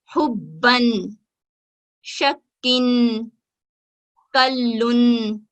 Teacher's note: इसी तरह अगर हमारे पास तनवीन हो तो हम इसको नून की आवाज निकालते हुए पढ़ेंगे, पिछले हर्फ को तशदीद के साथ जोड़ेंगे और नून की आवाज निकालते हुए अदा करेंगे